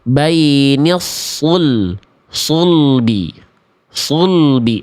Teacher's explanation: Dhommahnya jadi enggak sempurna. Enggak jelas vokal u-nya.